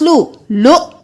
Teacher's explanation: جھٹکا دیں گے کیونکہ حمزہ کے اوپر جزم ہے